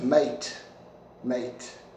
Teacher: if you got a rising tone maybe maybe not so friendly